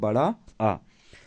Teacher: विवृत स्वर जिसके उच्चारण में जो है मुख द्वार सर्वाधिक खुलता है।